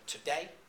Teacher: every other syllable in that line is stressed or emphasized so you have an unstressed syllable as in the word today followed by a stress of the day part in today